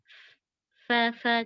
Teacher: Bibir bawah bagian dalam ketemu sama ini nih, ujung gigi dari atas.